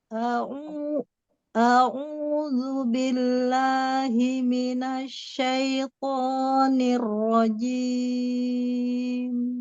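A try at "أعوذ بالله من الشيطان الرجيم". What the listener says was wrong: Nah, di sini terdengar sekali jadi shy ya. Mau Rahan lebih turun Umi? Syaito. Asyaitoni.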